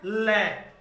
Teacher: हवा है वो जीभ के दोनों तरफ से बाहर निकलती है, इसको क्या बोलते हैं, पार्श्विक।